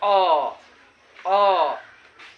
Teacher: अ का उच्चारण कहाँ से होता है, कंठ से होता है।